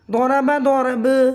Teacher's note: حالت وقف میں با کا زبر ختم ہو جائے گا، با ساکن ہو جائے گا، قلقلہ ہوگا قلقلہ کبریٰ